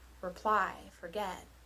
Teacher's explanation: reply and forget follow the short long stress pattern